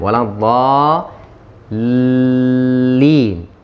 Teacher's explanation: Waktu berhenti di lam, karena lam tasydid, kita tahan di lam.